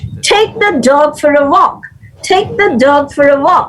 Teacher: the stresses should be on take dog and walk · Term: sentence stress